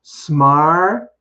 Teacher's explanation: the T in smarter is actually not a T. It's written as a T, but it's spoken as a D.